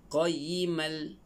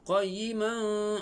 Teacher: Nampak dia memasukkan tanwin dalam lam. Jadi kena baca qayyimal. · Kalau tanwin tu dengan lam, idgham tanpa dengung.